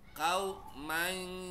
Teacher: Pas gigi ente rapet, lempar ke hidung bunyinya.